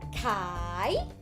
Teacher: So, Kai with long sound and the sound go down and up.